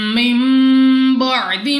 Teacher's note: میم ساکن کے بعد دوسری میم ادغام شفوی کا قاعدہ ہے، یہاں پہ ہم نے غنہ کر کے پڑھنا ہے